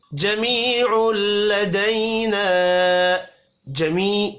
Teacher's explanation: जमी या मद्दा है, एक अलिफ के बराबर खींच कर पढ़ेंगे।